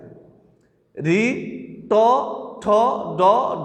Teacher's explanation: তুমি একটু প্র্যাকটিস করে দেখো যে রি উচ্চারণের সময় জিহ্বার আগা উপরে তালুর সাথে লাগতেছে। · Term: মূর্ধা বর্ণ